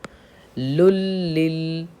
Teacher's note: یہاں پہ لام پہ تشدید ہے اس لیے ہم سختی کریں گے